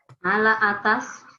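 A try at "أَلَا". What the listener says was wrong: Ala pakai hamzah. Ala. Bukan ala. Ala.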